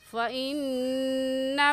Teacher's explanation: فَإِنَّ پر غنہ کریں گے کیونکہ نون مشدد ہے اور نون مشدد پر ہمیشہ غنہ کر کے پڑھتے ہیں۔